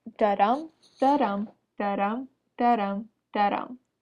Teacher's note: Browning also writes in iambic pentameter, which is an unstressed syllable followed by a stressed syllable